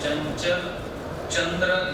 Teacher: चंचल, चंद्र यासारख्या दोन्हीकडे वापरात असलेल्या शब्दांमधील च हे दोन्ही भाषेत तालव्य उच्चारले जातात.